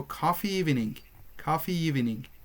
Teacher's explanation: When the first word is ending in E, long E, we add a Y sound.